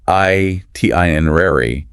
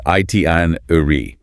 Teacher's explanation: Americans say itinerary, while the British compress it into itinerary.